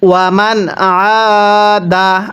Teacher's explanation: আইনের মধ্যে 1 আলিফ টান দিব এবং এই নুন সাকিনটি স্পষ্ট করে পড়ব